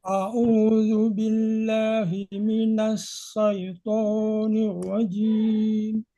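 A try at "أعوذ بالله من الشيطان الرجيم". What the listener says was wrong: Tonya jangan terlalu panjang. A'udzu billahi minasyaitonir. To 2 harakat saja.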